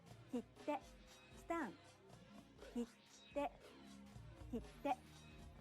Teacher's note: in japanese the speaker pauses for one clap in between the syllables this is best illustrated with an example how about these words